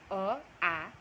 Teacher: कंठ से जो बोला जाता है वो स्वर अ, आ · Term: कंठय